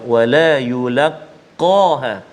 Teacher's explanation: Huruf qaf dekat situ, qaf isti'la tebal, maka kita baca bagi dia bunyi tebal lah.